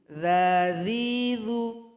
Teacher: Zal ini berada di ujung lidah dengan ujung gigi.